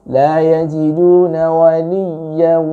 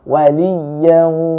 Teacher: Di sini dikasih tasdid ya-nya, ya, itu ditekan sedikit dengan kadar sewajarnya. Ya, tidak boleh terlalu tamtid, tidak boleh berlebihan juga.